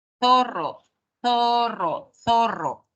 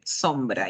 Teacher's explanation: Este sonido alveolar, la lengua está más arribita en el alvéolo, no está entre los dientes.